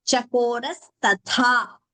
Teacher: Tha is Mahaprana. Only the second Tha is Mahaprana. We should not chant the first also as Mahaprana.